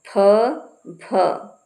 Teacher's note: फ भ से ओट से थोड़ा सा वायु ज्यादा निकलती है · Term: महाप्राण